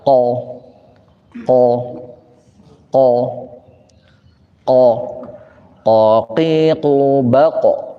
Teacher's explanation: bagian paling belakang daripada langit-langit paling atas di sanalah Q keluar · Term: qof